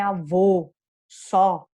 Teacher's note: Quando eu tenho esse acento na última sílaba, eu marco bem essa O, porque eu também tenho uma sílaba forte aí, então é avô, só, bem tônico, nunca será pronunciado como U neste caso, ok?